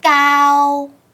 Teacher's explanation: Those consonants are plosive. But in Vietnamese, the k sound is an implosive one, so you don't produce that plosion.